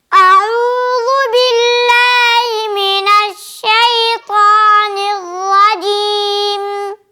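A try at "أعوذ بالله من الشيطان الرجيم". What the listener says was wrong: ज़ाल को मोटा नहीं करना, आऊज़ु वो नहीं, ज़ू ज़ू बारीक ज़ू ज़ू। नून की ज़ेर को मारूफ निर्रजीम निर्रजीम जी।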